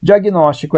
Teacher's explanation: O acento na antepenúltima. É proparoxítona.